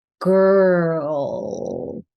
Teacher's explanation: and then we have to end with a dark L.